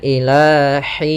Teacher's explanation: Nah, ini hati-hati dalam pelafalan ha, jangan sampai ilahin, jangan dibaca dengan ha besar tapi ha kecil